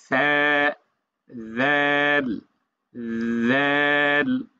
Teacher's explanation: জিহ্বার আগাটা সামনের উপরে দুই দাঁতের সাথে লাগার পর ছেড়ে দিবেন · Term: সা এবং জাল